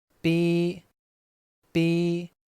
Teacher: in English pronunciation the letter B doesn't need to be fully voiced anyway